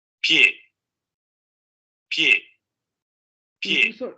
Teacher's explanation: entre la P y la E se escucha como un sonido extremadamente palatal y prácticamente rozando al fricativo, porque en ese contexto esta semiconsonante está funcionando como una consonante. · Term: Palatal aproximante sonoro